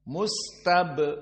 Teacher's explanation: ba dari huruf qalqalah, maka sifatnya yuqalqil, sehingga di sini terjadi al-qalqalah as-sughra